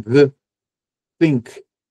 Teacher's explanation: o th do inglês, né, que é um som diferenciado em que a língua fica no meio dos dentes, né, para produzir um the think, enfim, a gente vai utilizando o que nós temos e o que nós temos aqui eh na cavidade oral é língua, dente, palato, úvula, certo?